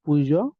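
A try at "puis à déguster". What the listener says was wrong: পুইজো কেন পুই লেখা আছে না লিয়াজো করতেছেন তাই না লিয়াজোর দরকার নেই পুই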